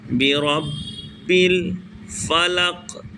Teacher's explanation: برب، اور با پر چونکہ تشدید ہے لہٰذا تھوڑا، اور حروف با حروف قلقلہ میں سے ہے لہٰذا اسے تھوڑا جماؤ کے ساتھ ادا کریں گے